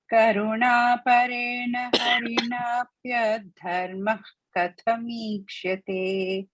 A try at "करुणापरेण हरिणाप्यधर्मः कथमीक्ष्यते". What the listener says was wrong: Don't break and say dharma because it is adharma.